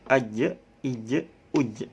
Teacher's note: Jadi memantulnya itu sedikit sudah masuk huruf qalqalah jim, aj.